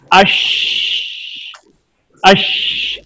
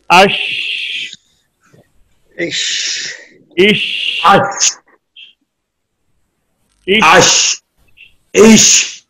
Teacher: Sheen pronounced as Sheen, using middle of tongue to touch the middle part of palate.